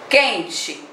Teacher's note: o N está nasalando essa vogal. Ou seja, ela está saindo com som pelo seu nariz. Pela boca, claro, e pelo nariz, né?